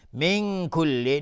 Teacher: نون ساکنش کاف اخفای حقیقی